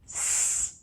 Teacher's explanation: Don't forget that this is an unvoiced sound, so we do not expect our vocal cords to vibrate during the production of this sound. S.